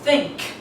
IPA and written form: θɪŋk (think)